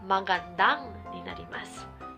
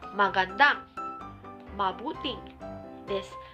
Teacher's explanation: マガンダとなんを別々にするんじゃなくて、つなげます。